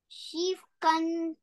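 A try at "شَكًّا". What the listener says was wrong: No, she, my lovely. You say Kasra, Shin Kasra? Great, Shakkan.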